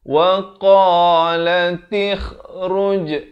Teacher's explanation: Kha ni makhrajnya di hujung kerongkong